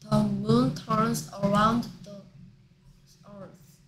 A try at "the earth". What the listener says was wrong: The earth. Earth 할 때 어 소리 모음이니까 더 F로 아니고 DF로 하듯이 The Earth입니다.